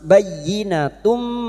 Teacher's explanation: Masuk pada huruf ya yang bertasdid hanya masuk tanpa ditahan lama-lama. Hanya masuk bayyinatum.